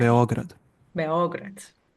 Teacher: stress usually should be on that O